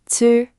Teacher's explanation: Dental, tongue flattened forward with a puff.